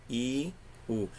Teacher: Parece que o som do I e do U, ele desce, né? Ele está caindo. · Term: semivogais